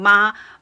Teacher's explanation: my voice stays level it's like I'm seeing a very steady note